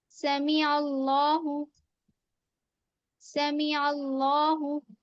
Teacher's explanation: جب عین کو لام سے ملا رہے ہیں تو ال، تو اس کے بعد والا لام موٹا پڑیں گے